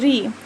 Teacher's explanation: जब हम री को पढ़ते हैं तो वह हमारा मूर्धा होता है